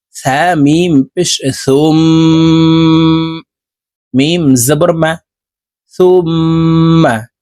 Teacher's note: আমরা নাকের বাঁশি থেকে গুন্না করে পড়বো